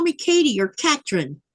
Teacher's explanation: the th sound is not in the Greenlandic pronunciation or Danish for that matter